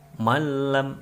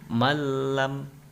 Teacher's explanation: cara membacanya adalah dengan tidak didengungkan, yaitu dibaca langsung, memasukkan tanpa didengung. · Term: idgham bil gunah